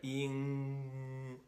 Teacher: You've stopped the air and you're forcing some to go through your nasal passageway there. Yin. You can feel your nose vibrating. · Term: back nasal sounds